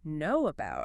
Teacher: you can literally feel your lips making that W shape. It's a physical mechanic of airflow. · When we say the words know and about quickly together, our lips have to physically push forward, which naturally creates a W sound to bridge the gap.